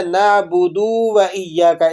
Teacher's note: اسے پڑھنے میں کیا غلطی ہوتی ہے کہ دال کو کھینچ دیا جاتا ہے